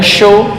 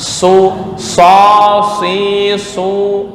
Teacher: Kayak sin biasa. Cuma lidah naik ke atas, itu yang disebut isti'la adalah makhraj shad.